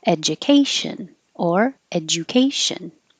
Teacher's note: The D and the U make a Ju, but you can say J because it's not stressed. Education or education.